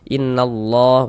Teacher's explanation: maka lafaz allahnya dibaca tebal huruf lam jalalahnya itu kita baca tebal